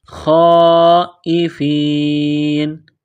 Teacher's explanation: لمبی مد ہے، 4 الف کے لمٹ میں کھینچنا ہے